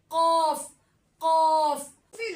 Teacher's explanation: तालू के नरम हिस्से पे जोर आएगा और जबान की जड़ होगी · تالو کے نرم حصے پہ زور آئے گا اور زبان کی جڑ ہوگی جو تالو کے نرم حصے پہ زور آ کے قاف ادا ہوگا